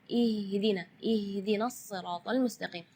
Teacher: makhraj huruf H itu adalah dari tenggorokan. Jadi keluarnya tipis karena H itu termasuk huruf di antara 28 huruf hijaiyah yang paling lemah adalah huruf H.